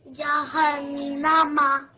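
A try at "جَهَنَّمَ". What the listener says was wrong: No, you can't prolong the noon because it only has a fatha. The noon has a fatha on top of it. That means you can't make it longer than 1 second.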